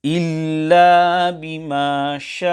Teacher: The Hamza must be pronounced clearly in a manner that it can be heard. However, there should be no qalqalah carried out on the Hamza. Hence, to recite إِلَّا بِمَا شَاءَ, this will be incorrect.